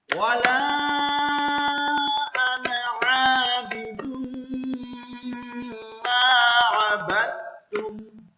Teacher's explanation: Nun dibaca pendek walaupun tulisannya panjang.